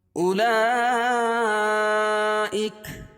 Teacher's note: حروف مدہ کے بعد حمزہ اسی کلمے میں ہو تو مد متصل ہوتا ہے. اس میں طول ہے 3 سے 5 الف کے برابر کھینچ کے پڑھیں گے